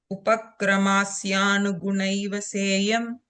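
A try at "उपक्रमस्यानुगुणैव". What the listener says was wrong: Yeah, krama, no a sound there. Upakramasyanu.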